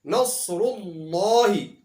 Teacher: نصر اللہ کے لفظ اللہ سے پہلے پیش ہے، اس لیے یہاں پر لفظ اللہ کو موٹا پڑھا جائے گا